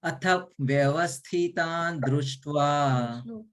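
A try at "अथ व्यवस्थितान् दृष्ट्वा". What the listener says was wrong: Vyavasthi, thi, rasva sound.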